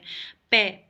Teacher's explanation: पे हमारे ओष्ठ होते हैं, ये होठों से बोले जाते हैं।